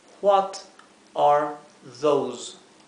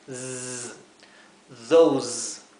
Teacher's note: la palabra those, que significa esos o aquellos, se pronuncia al final con una S vibrada, como un zumbido.